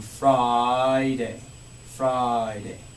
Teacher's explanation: So like as you can hear, Friday, for example, I'm saying Friday, Friday. Putting the I right onto the next syllable.